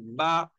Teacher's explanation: दोनों होंठों का तरी वाला हिस्सा इससे बा अदा होता है